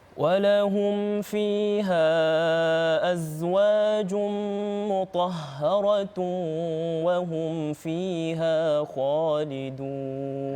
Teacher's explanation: cara bacaannya sebut mim dengan mim dengan jelas dan juga tidak didengungkan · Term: izhar syafawi